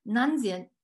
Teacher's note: For example, the sensory prefix na itself is accented, so it neutralizes the falling tone of the verb stem nzi. So we have a bisyllabic sensory form pronounced as nanzio, he or she, or it is eating.